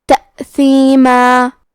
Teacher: اور ہم کلمت تأثیمہ پہ رکے تو تنوین زبر پہ مد الف سے رکیں گے